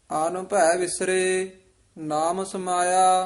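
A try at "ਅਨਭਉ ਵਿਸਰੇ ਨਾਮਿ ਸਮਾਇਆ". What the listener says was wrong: ਇਹ ਵੀ ਅਨ ਭੈ ਪਾਠ ਇਕੱਠਾ ਨਹੀਂ ਕਰਨਾ, ਵੱਖਰਾ ਹੀ ਕਰਨਾ ਹੈ। ਆਨ ਭੈ ਵਿਸਰੇ ਨਾਮ ਸਮਾਇਆ।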